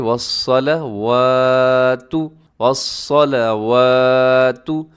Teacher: صاد موٹا ہے اور واو کے اوپر کھڑا زبر کی وجہ سے ہم لمبا کر دیں